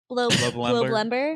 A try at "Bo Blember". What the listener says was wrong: Not blow, Bo Blember.